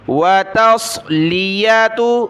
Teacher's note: تا کو صاد کے ساتھ ملا، تا باریک ہے، صاد کو موٹا پڑھنا ہے